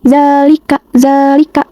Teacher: Di sini tuh terdapat fathah tegak pada zal. Lalu dibacanya panjang 2 harokat pada huruf za-nya ini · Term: mat tabi'i